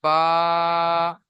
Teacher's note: 16 নম্বর মাখরাজ দুই ঠোঁটের ভিজে অংশ থেকে উচ্চারিত হয় বা।